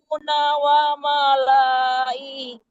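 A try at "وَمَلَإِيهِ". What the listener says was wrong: jangan la-nya dipanjangkan ya. Itu ada tanda sifir namanya. Kalau ada bulat gitu tidak boleh dipanjangkan.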